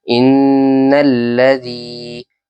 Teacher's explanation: یہاں پر نون پر غنہ ہوگا، تشدید ہے اسی لیے